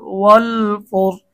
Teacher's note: এখানে আমরা রকে মোটা করব, কারণ কি আমরা 7 নং সূত্রে পড়েছি র সাকিন ডাইনে পেশ হলে রকে মোটা করতে হয়।